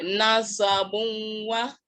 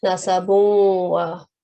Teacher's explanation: So when waw comes after tanween, we should combine them or merge them with light nasal sound. Partial assimilation it is called.